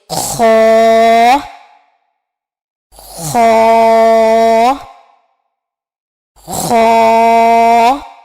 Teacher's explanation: خو جو ہے وہ ادنے حلق سے ادا ہوتا ہے. تو ادنے حلق سے مراد یعنی حلق کا وہ حصہ جو منہ کی جانب ہے، وہاں سے خو ادا ہوتا ہے.